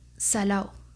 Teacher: presenta la caída de la D intervocálica de los participios. Por ejemplo, salado se pronuncia salao y perdido se pronuncia perdió.